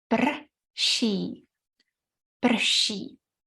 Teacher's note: Czech is an amazing language that can use the sound r, which is a consonant, as a vowel.